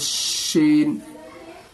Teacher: इस शीन को सीटी की आवाज़ निकाल करके बोलनी है